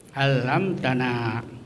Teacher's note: lain ta alamtanaah itu disebut izhar syafawi jadi izhar itu terang jadi mimnya itu terang dibaca dengan mulut tertutup